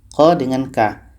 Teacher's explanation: Letak kedua huruf ini adalah pada pangkal lidah. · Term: ikhfa ab'ad